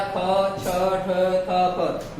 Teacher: मेरे बोलने से आपको अनुभव नहीं होगा, ये आप बोल के देखेंगे तब आपको समझ आएगा कि वाकई में अधिक मात्रा में वायु प्रक्षेपित होती है महाप्राण व्यंजन में